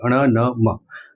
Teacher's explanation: અનુનાસિક એટલે એ વખતે નાકમાંથી પણ હવા પસાર થાય છે